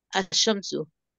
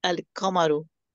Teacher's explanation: So basically, in solar letters, we don't pronounce lam. Lam becomes silent.